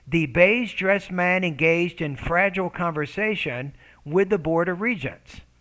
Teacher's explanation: at the end of each thought group my tone went up slightly and i dropped my tone when i got to the end of the sentence